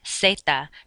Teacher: the letter z does not make a buzzing sound like it does in english you just pronounce it like an s